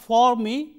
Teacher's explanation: For me, weakened, for weakened into fur. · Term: weak form